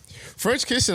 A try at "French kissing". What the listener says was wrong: Say French. Say kissing. French kissing altogether. You said Fresh kiss. It sound like Fresh Prince.